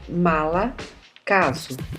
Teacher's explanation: As vogais podem ser médias, no caso a letra a língua permanece baixa, por exemplo, mala, caso.